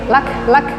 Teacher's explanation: Kam ahlakna, ha besar, ha ahlak, ka nya ada nafas sedikit, lak. Na dua harokat, mat bi alif.